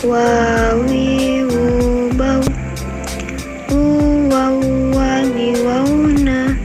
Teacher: Selanjutnya huruf wa, diucapkan dengan mengumpulkan dua bibir.